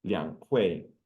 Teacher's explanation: Liang Hui, third and fourth tone, literally mean the two meetings.